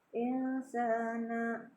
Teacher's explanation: Insana, maka dibacanya samar ya, namanya ikhfa, disebut ikhfa ya, bacanya samar. Jadi nun sukunnya tidak jelas ya, samar dengan dengung ya, disertai dengung.